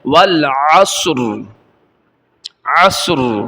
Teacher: بعض لوگ والعصر پڑھ کے چلے جاتے ہیں، را ظاہر نہیں ہوتا، یہاں پہ را کو ظاہر کرنا ہے